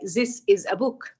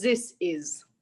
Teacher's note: They substitute the Egyptian dialect. They substitute the th sound with z sound. So they said this is.